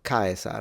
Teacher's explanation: should be a frontal like a s not a z and then the r should be trilled